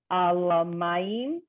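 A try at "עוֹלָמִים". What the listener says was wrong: It's meme. There's olamim. You added a vowel that wasn't there.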